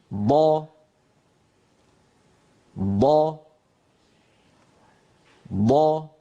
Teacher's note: لاحظوا بأنه يتوزع يمنة ويسرى، ولا يخرج من جهة مقدم الفم، يعني لا يخرج من الجهة الصفراء، بل يتوزع على المنطقة الخضراء يمنة ويسرى. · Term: الضاد